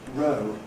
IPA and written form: rəʊ (row)